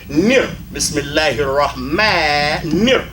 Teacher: So we don't say Bismillahir-Rahmanir-Rahim. It's Rahman, and then the noon goes with the next word.